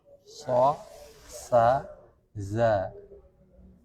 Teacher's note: Sofir adalah ketajaman pada suara. Huruf yang muncul saat melewati ruang sempit. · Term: sifat saofir